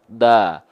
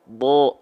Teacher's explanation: Huruf bod ketika berharokat fathah kan nggak dibaca da, tapi dibacanya bo dengan condong ke vokal O. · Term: huruf yang tebal